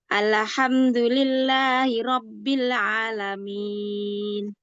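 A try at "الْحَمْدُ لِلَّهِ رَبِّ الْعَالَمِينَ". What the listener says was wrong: Bagus.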